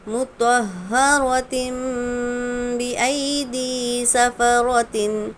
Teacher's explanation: تنوین کے بعد با ہے اس لیے ہم نے نون کو میم سے بدلے، غنہ اور اخفا کے ساتھ ملا کر پڑھیں گے